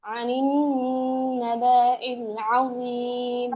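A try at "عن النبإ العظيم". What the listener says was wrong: বা টান হবে না। আনিন নাবাইল আযীম।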